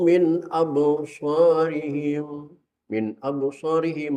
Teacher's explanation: nun mati ketemu hamzah. Hukumnya izhar